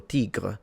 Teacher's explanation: They went for tigre, and clearly there is the uvular R.